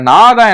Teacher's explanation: நாவின் நுனி மேல்வாய் அன்னத்தோட முன்பகுதியை தொடுவதால நகரம் தான் பிறக்கும்